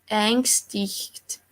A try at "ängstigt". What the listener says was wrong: Yeah, ängstigt. Without a G or something like that on the end of this CH. It follows directly the T. Ängstigt. Ängstigt. Eng is yeah, it's correct. Yeah, ängstigt, but not ängstigt. Not the second consonant after this. Ängstigt. Yeah, and